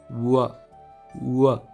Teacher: English के W का sound है व और इसको कहते हैं labiovelar approximant, यानी कि इसको प्रोनाउंस करने के लिए आपके लिप्स एक दूसरे के करीब आने चाहिए और अप्रोक्सीमेंट का मतलब है कि साउंड स्मूथ होनी चाहिए।